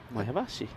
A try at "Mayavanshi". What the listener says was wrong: There's an N before the she. Mayavanshi. Because there's no I.